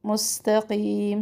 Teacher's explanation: مستقیم سین میں سختی اور سیٹی واضح ہوں